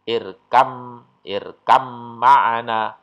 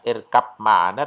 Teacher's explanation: ini juga antara ba dengan mim itu makhrajnya sejenis. Maka cara membacanya ba sukunnya lenyap. Cara membacanya irkam ma'ana, bukan irkab ma'ana tapi irkam ma'ana, gitu ya. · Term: idgham mutajanisen